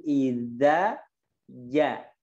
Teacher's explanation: Idza ja. Pertama di gigi, kedua di tengah lidah.